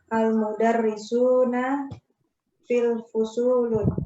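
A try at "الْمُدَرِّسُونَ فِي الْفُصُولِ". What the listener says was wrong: Iya, al-mudarrisuna Tanwin nggak fusulnya? Fil fusuli berarti kan ada alif lamnya Bu. Kalau ada alif lam berarti nggak bertanwin.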